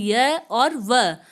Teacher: इनके उच्चारण में स्वरों से मिलता जुलता प्रयत्न करना पड़ता है, इसलिए इन्हें अर्ध स्वर भी कहते हैं।